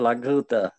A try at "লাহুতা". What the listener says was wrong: লাগুতা না লাহুতা। কায়া লাহুতা। লঘুতা না লাহুতা। লাহুতা। এগুলো আকার দিয়ে উচ্চারণ করতে হবে, যেগুলো তো আকার নেই সেগুলো তো আকার দিয়ে উচ্চারণ করতে হবে। লাহুতা। হ্যাঁ যেগুলো তো আকার নেই, আকার আছে তো ওগুলো তো দেওয়ার দরকার নেই যে।